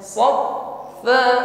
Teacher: Saat menekan huruf fa maka bunyi hurufnya tetap jalan ya, tidak tertahan. Dan sifat yang menyertai huruf fa di sini hamas jaraya dan nafasi, ada hembusan nafas. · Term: huruf fa bertasydid